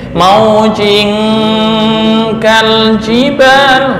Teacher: Jika ada tanwin atau non mati bertemu kaf atau qaf. Jadi dengung murni NG.